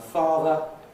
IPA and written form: ˈfɑːðə (father)